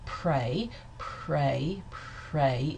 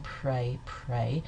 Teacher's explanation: the R sound in prey prey is devoiced